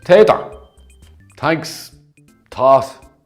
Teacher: Interestingly, this T and D pronunciation is very similar to the way Irish people would pronounce a TH. Those with an Irish accent don't really pronounce a true TH sound, but instead they would use a soft T or D sound.